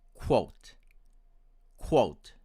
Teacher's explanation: my american friends will pronounce it as quote quote with the consonant of w